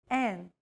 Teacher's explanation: you need to lower your soft palate and the back of your tongue, unblocking the nasal passage and allowing air to pass through the nasal cavity and out through the nose. Imagine you're humming with your mouth open and add the E vowel sound to it. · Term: nasal vowels